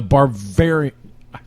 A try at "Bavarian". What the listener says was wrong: that Bavarian there's no R Bavarian bav right